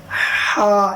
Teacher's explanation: ہا نکلتا ہے حلق سے، وسط حلق یعنی درمیانی حلق سے۔ ہا، جیسے ایک ٹھنڈی سانس لیتے ہیں ہم، ہا، اسی کو لمبا کر دیجئے، ہا۔